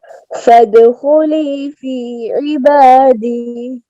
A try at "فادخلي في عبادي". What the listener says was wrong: عین کو کلیئر کریں.